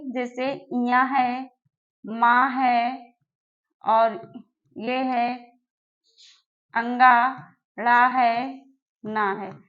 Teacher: इनका उच्चारण स्थान हो जाएगा नासिका से निकलता है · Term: पंचमाक्षर